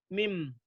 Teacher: Kalau mim, perut bibir bagian luar bertemu perut bibir bagian luar yang atas dan yang bawah itu saling bertemu. Perut bibir bagian luar ya.